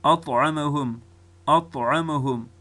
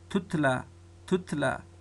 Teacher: طا ډکه ده او تی تشه ده